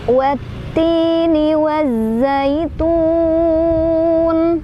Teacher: Watti di sana ada hukum alif lam syamsiyah karena ada alif lam yang bertemu dengan huruf syamsiyah yaitu ta. Cara bacanya alif lamnya tidak dibaca, melainkan kita langsung masukkan ke huruf syamsiyahnya yaitu ta. Jadi diidghamkan ya. · Alif lamnya dilewat, kita langsung idghamkan ke huruf ta sambil ditekan. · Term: idgham syamsiyah